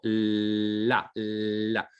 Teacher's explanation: f en las vibrantes la r fuerte se puede alargar y las laterales en cierta manera también las puedo temporalizarlas con un mayor tiempo